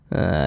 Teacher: Ini huruf jimnya sukun, ini tanda sukun nih. Pantulkan walinaj, mantul seperti itu. Dan dia ini termasuk kepada qalqalah kecil, qalqalah sughra, karena dia berada di tengah kalimat, atau dapat kita pahami karena dia berada di tengah bacaan seperti ini.